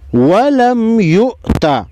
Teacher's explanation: حمزہ ساکن کو جھٹکے کے ساتھ پڑھیں گے